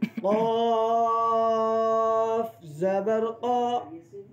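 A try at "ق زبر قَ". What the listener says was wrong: قاف کے ساتھ الف بھی موٹا ہو.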